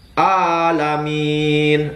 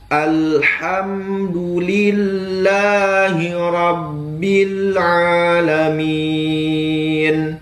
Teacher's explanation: huruf ha dan A itu sama di tengah tenggorokan · Huruf H dan A itu sama di tengah tenggorokan. Terkadang kita itu makhrajnya tuh berlari ke pangkal tenggorokan. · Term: huruf ain